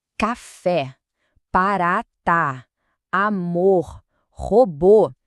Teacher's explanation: a gente bota a força na pronúncia bem no finalzinho, na última sílaba. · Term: oxítona